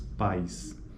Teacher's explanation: os segmentos vocálicos A e I ocorrem na mesma sílaba e há uma mudança contínua e gradual entre as vogais em questão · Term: ditongos